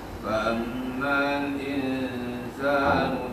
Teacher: Jadi, fa'amma ni dia ada dengung. Dan juga dalam masa sama dia ada mat. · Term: dengung dengan panjang